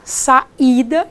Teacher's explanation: aqui eu tenho três sílabas a segunda é a tônica saída eu não pronuncio saída nem sai da eu pronuncio saída · aqui eu tenho 3 sílabas, a segunda é a tônica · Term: hiato